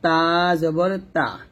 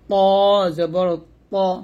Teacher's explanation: তা টা আমরা পাতলা করে উচ্চারণ করব আর ত টা মোটা করে উচ্চারণ করব